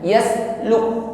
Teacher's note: Yasluk tidak tertahan. Yasluk ditekan pada huruf kaf, setelah itu diiringi dengan nafas yang terlepas. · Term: hamas